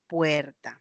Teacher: las vocales E, O, breves y tónicas pasaron a ser diptongos.